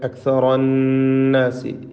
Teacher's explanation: ഈ 2 നൂൻ മുഷദ്ദദ, ശ്രദ്ധ നൽകപ്പെട്ട നൂനും മണിച്ചുകൊണ്ട് ഉച്ചരിക്കണം. അക്സറ, അക്സറ, ഇതിൽ റായിന് മാത്രമാണ് തഫ്ഖീം എന്നത് ശ്രദ്ധിക്കുക.